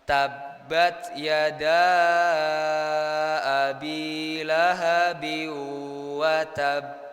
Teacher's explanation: Mad jaiz munfasil itu kita bacanya itu harus panjang, Pak, Bu.